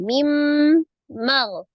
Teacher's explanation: Min ma ya nun sukun bertemu dengan huruf mim dihukumi idgham bi gunnah. Maka diidghamkan, dileburkan, ditasdid ke huruf mim disertai dengan dengung.